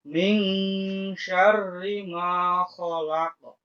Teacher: Huruf shin ini termasuk huruf ikhfa. Cara bacanya dengan mendengung, dengan mengganti huruf eng.